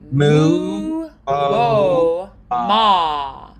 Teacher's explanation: you can feel how it starts more narrow and it gets more and more open